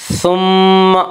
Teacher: میم مشدد غنہ ہوگا، غنہ کی مقدار 1 الف ہے